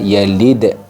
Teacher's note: disukunkan dalnya disukunkan kemudian dipantulkan